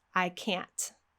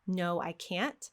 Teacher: We can hear that strong T that'll let us know that we're hearing the negative.